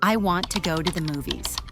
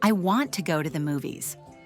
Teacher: The stressed words are want, go, and movies. Everything else is spoken more quickly. This is what makes English sound fast and smooth. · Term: Natural rhythm